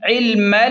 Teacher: عین لام زیر عل، میم لام زبر مل. میم کو ڈائریکٹ لام کے ساتھ ملائیں گے، یہ بیچ والا الف نہیں پڑھیں گے